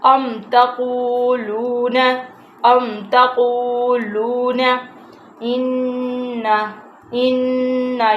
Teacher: أَمْ تَقُولُونَ إِنَّ یہاں پہ گنہ ہو رہا ہے، نون کے اوپر تشدید ہے، اس لیے ہم ادھر ناک میں سے آواز کو ادا کریں گے